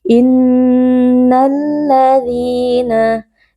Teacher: Nah, di sini ada alif lam syamsiyah karena ada alif lam bertemu dengan huruf lam. Alif lam pertama digabungkan ke dalam alif lam kedua sehingga lam kedua menjadi huruf yang bertasydid.